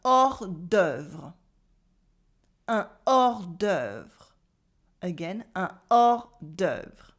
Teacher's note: And here the H and the S are silent, so we have un hors d'œuvre.